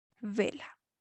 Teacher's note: Termina vela, por ejemplo, en vocal y es una palabra grave o llana y el mayor golpe de voz está en la penúltima sílaba